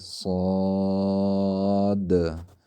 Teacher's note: صاد کے دال ساکنہ پر قلقلہ کرنا ہے